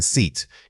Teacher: For the short vowel like in sit, your jaw should be relaxed and the airflow is quick and clipped. When you say the long vowel like in seat, you need to stretch that sound out, keeping your lips spread into a wide smile. The key difference isn't just length, it's tension. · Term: long e sound